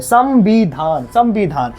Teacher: इस अनुस्वार का उच्चारण किस में हो रहा है? म में।